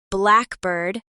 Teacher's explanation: blackbird, the bird, has the stress on black, but blackbird, any bird that is black, has a more even stress. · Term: compound nouns